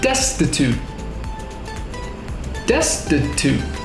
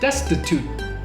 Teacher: we stop the air with our tongue, but we don't need to say a clear T. So we don't say destitute, we say destitute. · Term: T endings